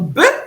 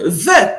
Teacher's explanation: le bet peut avoir une prononciation occlusive, donc be, ou alors une prononciation spirante, donc ve